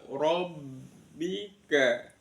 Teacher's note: ro-nya dibaca tafkhim tebal